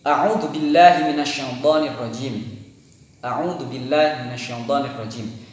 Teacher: Huruf hamzah makhrijul hurufnya yaitu ada di aqsal halqi. Aqsal halqi adalah tenggorokan yang paling dalam. Nah, di sini atau di pita suara.